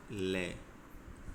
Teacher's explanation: इसमें जो फेफड़ों से बाहर आने वाली हवा है वह बगल से निकलेगी। जिनके उच्चारण में जीवा का अगला भाग मसूड़े को छूता है और वायु पारसव आसपास से निकल जाती है तो वे पार्श्विक है। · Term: पार्श्विक व्यंजन